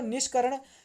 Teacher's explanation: निश प्लस करुण है, जो कि व्यंजन संधि का उदाहरण है। जो दंत्य स है वह मूर्धन्य स में बदल जाता है।